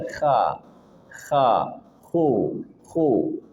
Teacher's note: K dari tenggorokan bagian atas. K dan dia ada suara ngorok tetapi jangan berlebihan